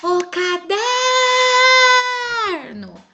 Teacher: Vimos que a sílaba tônica é o der. Pegando no esquema da palavra, der é a penúltima sílaba.